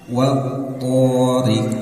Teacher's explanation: Nah, karena to ini bagian dari huruf syiddah yang harus diputus suaranya ya ketika bertasydid. To ya, tebalkan, diangkat tengah lidahnya ke langit-langit, itbaq istilahnya itu ya